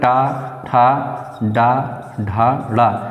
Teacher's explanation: ट वर्ग के अंतर्गत ट ठ ड ढ ड़ इनका उच्चारण स्थान क्या होगा मुर्धा होगा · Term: मूर्धन्य